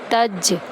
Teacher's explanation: تا کو جیم میں داخل کرتے ہوئے جیم پر کلکلا کریں گے، تج تا جیم زبر تج۔